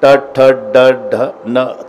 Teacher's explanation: जीभ वाकडी होऊन वरच्या टाळूला स्पर्श करते